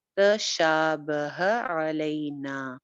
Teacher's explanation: شا کی حرکت لمبی ہے اور نا کی حرکت لمبی ہے